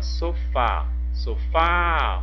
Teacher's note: a última sílaba é o fá é uma sílaba tônica é uma oxítona e termina com a letra A como tem o som aberto